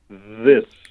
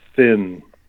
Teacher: th right you notice the first one I said MH this you can hear it's voiced right I'm using my vocal cords with it whereas the second one I'm not using my vocal cords but